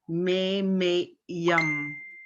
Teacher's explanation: So we say that vowel louder than the rest, me-me-yum. But with the apostrophe over the Y, the last Y, it kind of splits. So we're saying that Y twice. It's almost like a 7 is there.